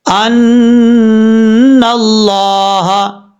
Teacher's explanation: نون کو جب لفظ اللہ سے ملائیں گے تو بیچ میں الف اور لام کو چھوڑ دیں گے، ان اللہ، اس طریقے سے لفظ اللہ کے اوپر کھڑا زبر ہے، ایک الف کی مقدار لمبا کر کے پڑھا جائے گا، ہا زبر ہا، یہ ہا بھاری ساؤنڈ کے ساتھ پڑھا جائے گا۔